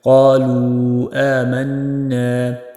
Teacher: قالوا مد منفصل، کم از کم ایک الف کی مقدار آپ نے اس کو لمبا کر کے پڑھنا ہے۔